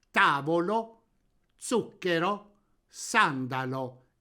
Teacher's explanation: parola sdrucciola, in cui l'accento cade sulla terzultima vocale.